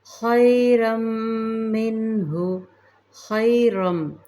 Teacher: مستعلیہ حرف ہے، خیرم منہ خیرم تنوین کو میم مشدد میں ملائیں گے